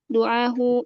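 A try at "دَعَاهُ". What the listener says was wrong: Bukan doa ya, tapi da'a fil madi itu. Da'ahu.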